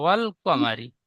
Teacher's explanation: মিমটি টান হয়ে যাচ্ছে, মিম টান হবে না